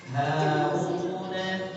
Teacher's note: tebalnya huruf ro itu hanya di ujung lidahnya. Karena ro bukan termasuk huruf isti'alah. Jadi bukan pangkal lidahnya naik, tebal di ujungnya. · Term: ro yang dibaca tebal